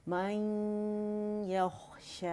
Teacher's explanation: غنّے کی آواز آپ کو فیل ہونی چاہیے, تھوڑی منہ سے آئے گی, زیادہ ناک سے آئے گی.